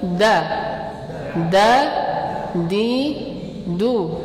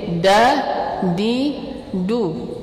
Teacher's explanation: Kalau huruf dal itu posisi lidahnya menempel di apa? Pangkal gigi seri atas.